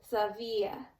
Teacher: this B in the middle is pronounced more like a V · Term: soft consonants